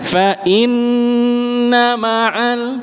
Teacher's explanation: Nunnya ditahan tetapi tidak panjang. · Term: nun tasdid ghunah